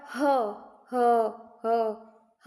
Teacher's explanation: ह में बहुत ज्यादा कंपन हो रही है गले में